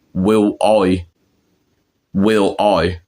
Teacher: And then when they say I, they say it like oi.